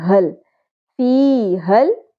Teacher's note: پہلے زیر حرف مدہ ایک الف کے برابر کھینچیں گے، حل ہا کی زبر لام سے مل جائے گی